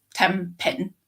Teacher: when you say 10 pin or 10 pins, the N at the end of 10 is more likely to be M rather than N.